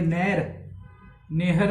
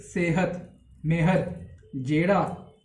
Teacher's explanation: ਉਹ ਏ plus ਈ ਦੀ ਆਵਾਜ਼ ਆਉਂਦੀ ਹੈ।